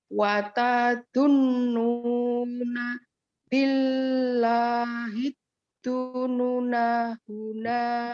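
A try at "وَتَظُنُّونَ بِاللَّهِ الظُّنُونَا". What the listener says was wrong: Nunya tetap panjang ya Bu. Jadi kalau wakaf tadi dibaca apa Ibu ya? Dibaca panjang apa pendek ketika wakaf? Kalau dibaca pendek itu ya wasol atau diteruskan.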